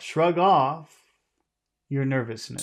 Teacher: We'll emphasize the word off.